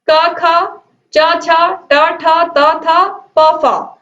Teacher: इनको बोलने में नाद या घोष उत्पन्न नहीं होता है, बल्कि क्या होता है? केवल सांस निकलती है या केवल सांस का उपयोग होता है इन वर्णों के उच्चारण में, इन ध्वनियों के उच्चारण में। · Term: अघोष